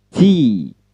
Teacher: Ujung lidah bertemu gigi atas bagian belakang, ucapkan T. Ada letupan letupan udara atau angin yang mendesis.